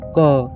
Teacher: क का उच्चारण करते समय जीभ और तालु को छूती है। क यानी जीभ और तालु दोनों को क।